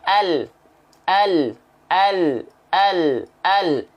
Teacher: Lam itu ya tepi lidah bagian kiri dan kanan, bagian tepi lidah kiri kanan, ya tepi lidah depan sampai ke ujung lidah nempel. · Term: huruf lam